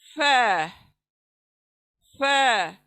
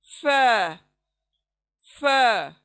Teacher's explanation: सामने के दांत होठों के नीचे के गीले हिस्से को लगने से अदा होगा फ